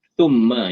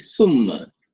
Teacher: dia lidah kita tu dia kena sentuh gigi atas Dia kena sentuh hujung gigi atas kalau ni gigi kita kan di atas ni dia kena sentuh